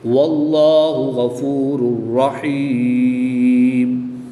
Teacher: 2 پیش کی تنوین کے بعد را حروف غیر معلوم میں سے ہے تو یہاں پر ادغام بلا غنہ ہوگا، کیونکہ غنہ نہیں کریں گے بلکہ بغیر غنہ کے ادغام کریں گے۔